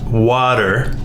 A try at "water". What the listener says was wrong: The way you're pronouncing it, it sounds like there's a D instead of a T. We pronounce it as water. Water.